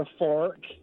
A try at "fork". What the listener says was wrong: Sorry, you mean a fork? You mean a fork, don't you? A fork, not fark. He said fork, he means fork. A fork.